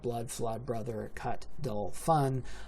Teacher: they adjust down to a lower, more mid quality of strut